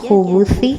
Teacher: جو زبان کی نوک ہے وہ سامنے اوپر والے دانتوں کے کنارے سے لگے گی